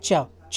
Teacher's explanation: चा हमारी जो जीभ है ये हमारे तालु से टकराएगी। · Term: तालव्य वर्ण